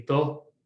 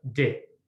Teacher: So D could be pronounced broad, which would be duh, or slender, di. In this case, O is a broad vowel, therefore it's pronounced like a broad consonant.